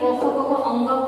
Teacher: क ख ग घ अंग कंठ से उच्चारित होता है, कंठ पे बल पड़ता है, इसीलिए इसे हम कंठ व्यंजन कहते हैं